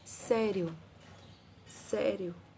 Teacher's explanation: Então ele é crescente do menor para o maior. E é oral porque o som sai todo pela boca.